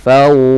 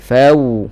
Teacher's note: Mesti muncullah makhraj waw asy-syafatain. Di antara dua bibir. Jangan fawqa.